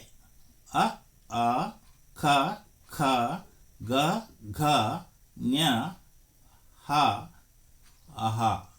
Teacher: ಅನುನಾಸಿಕ ವರ್ಣಗಳು ಕಂಠ ತಾಲವ್ಯ ವರ್ಣಗಳು ಕಂಠೋಷ್ಟ ವರ್ಣಗಳು ದಂತೌಷ್ಟ ವರ್ಣಗಳು ಕಂಠ್ಯ ವರ್ಣಗಳು ಕಂಠದ ಸಹಾಯದಿಂದ ಉತ್ಪತ್ತಿಯಾಗುವ ವರ್ಣಗಳನ್ನು ಕಂಠ್ಯ ವರ್ಣಗಳು ಎನ್ನುವರು